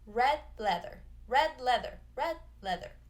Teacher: You just go straight from the D to the L. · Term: stop D